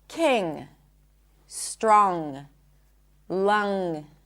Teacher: Can you hear it? I'm not popping the g really.